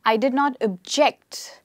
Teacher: so the stress here is on the second syllable